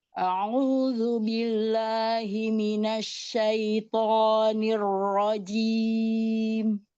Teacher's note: Tebalkan lagi nirjim. Karena di sini rnya ro tasdid.